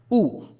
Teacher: उ में हम अपने होठों को गोल बना दे रहे हैं। बिल्कुल वृत्त के आकार का। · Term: वृत्त मुखी, वृत्तमुखी